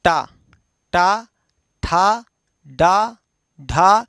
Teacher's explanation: अब ये देखिए, आप टा बोल करके देख लीजिए, पूछे सर मूर्धा कहाँ है, तो आप टा बोलिए तो आपकी जिह्वा एक जगह टच करेगा। टा, तालू से थोड़ा पीछे जाइए तो जीभ जो है मुड़ करके एक जगह को छूती है